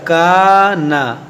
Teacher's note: یہ الف مدہ ہے، کانا، اس الف کو کھینچیں گے، نون کو نہیں کھینچیں گے